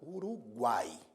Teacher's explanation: é um tritongo oral. Por quê? Porque ao pronunciar, o som sai totalmente pela boca. Uruguai. Não há obstrução à passagem do som pelo nariz se você estiver com o nariz tapado.